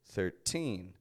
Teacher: that teen is the stressed part of the word